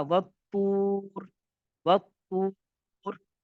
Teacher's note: تو یہاں پر را کو پر پڑھا جائے گا کیونکہ را موقوفہ ہے، را موقوفہ سے پہلے والا حرف، را